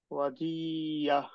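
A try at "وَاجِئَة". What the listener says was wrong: ওয়াজিআ। আ। আ উচ্চারণটা একটু স্পষ্ট হবে। আ।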